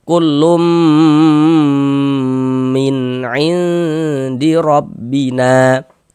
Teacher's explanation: Jadi di bagian lumnya itu suaranya itu kita tahan. Kita panjangkan sejenak sepanjang dua harakat. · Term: dighunahkan